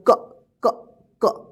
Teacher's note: अगर हम अ की साउंड को निकाल देते हैं तो उच्चारण होगा क क क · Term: आधा क